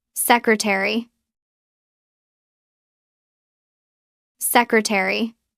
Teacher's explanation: In American English, we keep the re sound a bit more distinct, but we still squeeze it.